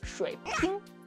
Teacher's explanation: And her 'shui ping', the 'shui' was really high.